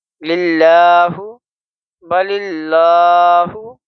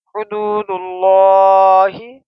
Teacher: لفظ اللہ سے پہلے زبر نہیں بلکہ زیر ہے تو یہ اللہ کو ہم باریک پڑھیں گے ، کیسے؟ لام لام زیر لل لام کھڑا زبر لا، للہ